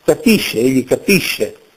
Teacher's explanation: consonanti italiane che nella grafia appaiono semplici, ma nella pronuncia sono doppie, geminate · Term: geminata